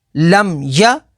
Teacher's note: لام میم زبر لم، یا زبر یا، لم یا۔ میم ساکن کے بعد یا ہے تو یہاں پر اظہار شفوی ہوگا، یعنی میم ساکن میں غنہ نہیں کریں گے۔